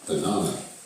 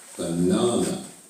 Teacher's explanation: Do you remember where the stress is? It's on the 2nd syllable.